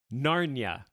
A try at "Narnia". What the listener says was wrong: You're saying Narnia weird. You're saying it with 2 syllables. It's Narnia. You're saying Narnia. You're saying 2 syllables, Narnia. But it is Narnia. I've never heard anyone say it the way you're saying it.